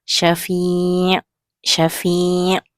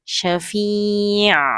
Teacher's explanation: Mengalir pada makhraj ain iaitu di tengah kerongkong. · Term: sifat tawassud